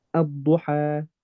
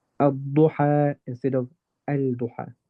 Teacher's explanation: it's lam shamsiyya, it merges into the next letter, which is the dad. Effectively, it just gets cancelled out.